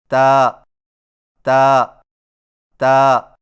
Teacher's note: تا کی ادائیگی میں زبان کی نوک کو ثنایا علیہ کی جڑ سے لگا کر باریک آواز میں پڑھیں